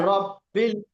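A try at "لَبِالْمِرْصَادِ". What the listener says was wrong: রা রব্বি কোথায় আছে? র নেই। লামের পরে বা দেখেন, লাম জবর লা, বা লাম জের বিল, লাবিল। আলা কই? আলা নেই। আলা নেই ভাই আলা নেই তো, লাবিল। এটা আলিফ নয়, এটা লাম, এটা লাম।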